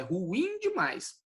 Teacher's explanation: A pronúncia correta é ruim, porque ela é oxítona